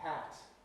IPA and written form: pæt (pat)